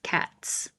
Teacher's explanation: The T is voiceless. So you add the S and it looks like an S and it sounds like an S.